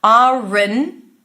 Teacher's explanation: the N comes right after the schwa sound